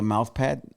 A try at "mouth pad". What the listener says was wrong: A mouth pad? You sound like Mike Tyson saying mouse pad.